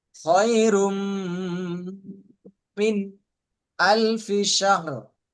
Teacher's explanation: খয়রুম গুণ হবে এবং মিন এখানে পুরা স্পষ্ট হবে। এখানে প্রথম হচ্ছে একদম বাগুন না, গুণ হবে।